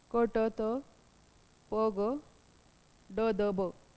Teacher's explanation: व्यंजनाचा उच्चार करताना हवा अडवून जोरात बाहेर फेकली जाते, तेव्हा स्फोट होतो, म्हणून त्या स्फोटक व्यंजने असे म्हणतात.